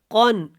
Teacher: قن کے اوپر اخفا نہیں کریں گے کیونکہ نون تنوین کے بعد یہاں پہ عین ہے اور عین حروف حلقی میں سے ہے.